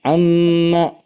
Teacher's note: kalau tahanannya sampai 3 itu pasti getar ke hidung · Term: gunnah